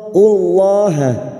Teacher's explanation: lam jalalah yang didahului dhammah kita baca tafkhim. Qullahal, qullahal, masuk pada idgham syamsiyah.